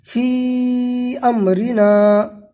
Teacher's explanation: مد منفصل کو 3 یا 4 الف کے برابر کھینچ کر کے پڑھیں گے